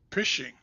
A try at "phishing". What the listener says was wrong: it's pronounced fishing the p is fishing like fill fish